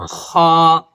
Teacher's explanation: غین کو ادا کرنے کے لیے جس طریقے سے ہم غلغلہ کرتے ہیں، منہ میں پانی کو لے کر غلغلہ کرتے ہیں، تو اسی طریقے سے غین نکلتا ہے۔ اور خا، جب ہم ایک لعاب باہر پھینکتے ہیں لرزش کی شکل میں تو وہ خا ادا ہوتا ہے